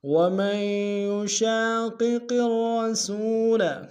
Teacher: دونوں قاف موٹا ادا کریں گے